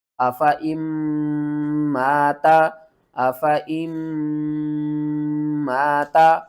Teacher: حمزہ زبر آ، فا زبر فا، آفا، حمزہ میم زیر ام، درمیان میں جو نون ہے نا اس کو آپ نے چھوڑ دینا ہے، اور اس حمزہ کو میم کے ساتھ ملانا ہے۔ میم مشدد ہے تو اس کے اوپر غنہ بھی کریں گے۔ الف سے پہلے زبر ہے، حروف مدہ ایک الف کے برابر کھینچ کر پڑھنا ہے۔ · میم مشدد ہے تو اس کے اوپر غنہ بھی کریں گے۔ الف سے پہلے زبر ہے، حروف مدہ ایک الف کے برابر کھینچ کر پڑھنا ہے۔ آفا ام ماتا، آفا ام ماتا، آفا ام ماتا آپ نے نہیں پڑھنا، آپ نے الف کو چھوڑ دینا، یہ وصل الف ہے۔